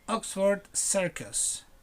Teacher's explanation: you stress the word in the first syllable